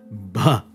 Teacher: B is both voiced and aspirated. You have a vibration and a puff of air.